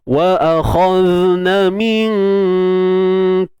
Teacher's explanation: Kaf ni huruf ni nipis, huruf istifal. Jadi dengung pun nipis. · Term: ikhfa hakiki